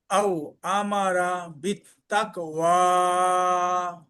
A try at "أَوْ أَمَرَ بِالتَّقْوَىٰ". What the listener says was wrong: শব্দটা মনে হয় রার মতো শোনা গেছে, রা কোন হরফ নেই ইনশাআল্লাহ।